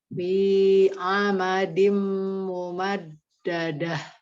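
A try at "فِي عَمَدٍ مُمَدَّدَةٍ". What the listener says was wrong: Setiap ada mumadda, pas da pertamanya jadi agak kurang ujung lidah gitu loh. Jadi enggak kurang tegas. Mumad Dal yang kedua aja. Jadi hati-hati dalnya.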